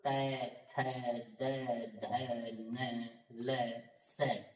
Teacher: लृ तू ल सानाम दंताः, लृ तू का मतलब त थ द ध न ल स, इन सब का उच्चारण स्थान दंत्य रहेगा, अर्थात इन सब वर्णों का उच्चारण दांतों से किया जाएगा